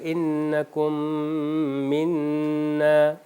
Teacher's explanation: دوسرے میم کے اوپر شدہ آ جاتا ہے اور غنہ کی صفت کو ادا کیا جاتا ہے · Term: ادغام